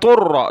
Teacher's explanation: طا کو را کے ساتھ، طر، دونوں کو موٹا کیا، را کو سخت کیا